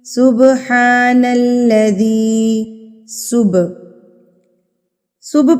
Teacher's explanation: صبح پر ہم قلقلہ کریں گے، یعنی کہ تھرتھراہٹ سے، وائبریشن سے ہلا کے اس کو پڑھیں گے. سین کو با کے اوپر مار کے پڑھیں گے، صبح نہ کہ صبح پہ آواز کو روکنا نہیں ہے.